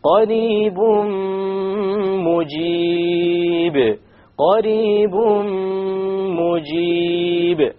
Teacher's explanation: We drop the n sound and we merge the tanween immediately onto the meme with a ghunna.